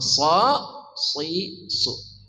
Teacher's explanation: dari ujung lidah bersama ujung gigi seri bawah, sa, si, su.